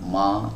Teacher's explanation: Indonesia mamimu baik kemudian huruf mim ini berharakat fathah ya terkadang fathah yang ada di atas huruf mim ini dibaca dengan tebal ya oleh sebagian orang dan ini adalah sebuah kesalahan ya Jadi bukan Ma tapi ditipiskan bukan juga dibaca dengan miring